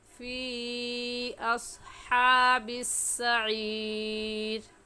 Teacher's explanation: حروف مدہ کے بعد حمزہ اگلے کلمے میں آ جائے تو اسے مد منفصل اور مد جائز کہتے ہیں. اور اس مد کو 3 الف کے برابر کھینچ کر پڑھیں گے، نہ اس سے کم اور نہ ہی اس سے زیادہ